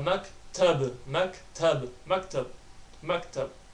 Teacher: Slight echo on the ba sound.